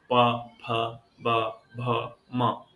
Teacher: प वर्ग में सर्वाधिक सक्रिय हमारे ओष होते हैं · बिना ओष्ठ संचालन के हम प वर्ग का उच्चारण नहीं कर सकते हैं। प वर्ग बिना ओठों को मिलाए नहीं बोला जा सकता है।